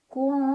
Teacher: Ada ikhfa aqrab karena ada nun sukun bertemu dengan huruf ta. Cara bacanya nun sukun dibunyikan samar-samar ke huruf ta sambil dengung.